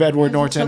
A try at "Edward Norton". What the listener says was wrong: can you say Edward Norton again you really hit the T